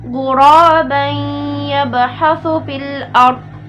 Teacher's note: Di sini itu hukumnya ada 2, yaitu mad tabi'i kemudian idgham bi gunnah. Ya, mad tabi'inya itu ghura karena fathah bertemu dengan alif ya, maka dibaca 2 harokat. Kemudian ghuraban itu adalah idgham bi gunnah.